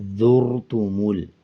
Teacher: جب زا کو را کے ساتھ ملائیں گے تو پر پڑھیں گے، یعنی موٹا کر کے پڑھیں گے